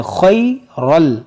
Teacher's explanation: یہاں پر دیکھیں تنوین کے بعد لام ہے، یہاں پر ادغام کریں گے، اور یہ خا جو ہے حروف مستعلیہ ہے، اس کو موٹا کریں گے